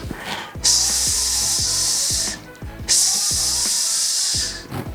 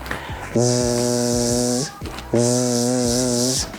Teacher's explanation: our mouth and tongue stay the same when we pronounce s and z The only difference is our vocal chords are vibrating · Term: voiced and voiceless sounds